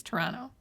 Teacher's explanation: you know how Canadians don't say T's? We don't pronounce our T's.